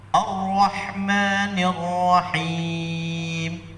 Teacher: Sekali getaran saja yang diajarkan oleh ulama-ulama kita ahli qiraat ketika kita membaca Ar-Rahman, ya, tidak boleh kemudian 2 kali getaran atau sampai 3 kali. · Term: ra yang tebal